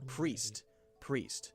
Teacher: when you make the P sound, the R is already there waiting for the P to happen, right? It's there.